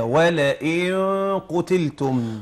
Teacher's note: لا مغلظه طبعا. ولئن قتلتم، الغنه تتبع ما بعدها